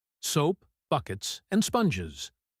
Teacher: The stress is equal on each item. It sounds like a drum beat. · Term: listing rhythm